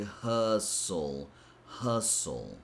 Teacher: we don't pronounce the T sound. All you have to pronounce is H, which is an H and sound, and then S and a dark L sound, which is that L that we usually use the back of the tongue to pronounce it.